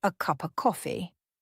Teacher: of would often get lost in a phrase like a cup of coffee, which sounds more like a cup of coffee.